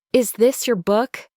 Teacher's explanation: My voice rises on book. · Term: rising intonation